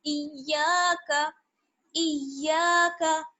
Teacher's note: अलिफ मद्दा जुड़ा हुआ है तो थोड़ा सा खींचेंगे